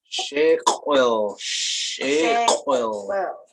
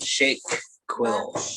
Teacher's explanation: Now that Q labulized gray W, you round your lips, you blow out, and you make the Q sound, which is said in the back end of the mouth